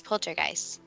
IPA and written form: ˈpoʊltərˌɡaɪst (poltergeist)